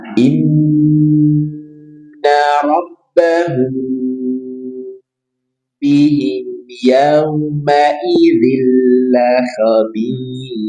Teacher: mim sukun bertemu dengan ba tahan 2 sampai tiga rakaat dan dengungkan · izhar syafawi jelas tidak perlu ditahan dua sampai harakat dan jelaskan mimnya tanpa tambahan dengung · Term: ikhfa syafawi